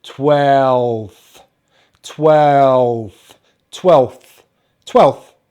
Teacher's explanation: with twelfth actually we use an f at the end and the only difference is there's no vibration